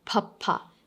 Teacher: comes from joining the both lips together